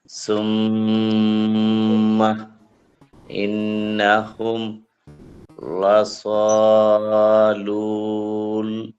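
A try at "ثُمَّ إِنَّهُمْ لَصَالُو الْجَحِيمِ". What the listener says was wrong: এই যে লুল টান হচ্ছে, টান হবে না, লুল।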